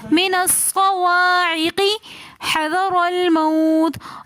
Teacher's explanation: را کے اوپر زبر ہے اس لیے ہم را کو موٹا کر کے پڑھیں گے